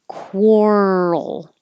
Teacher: moving from the r position to the l position you keep making noise